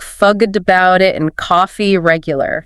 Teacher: spectrum we have the New York accent okay which is fastpaced drops R sounds and has a distinct rhythm